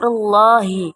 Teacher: ada lam tafkhim karena ada dhomah sebelum lafal Allah cara membacanya ditebalkan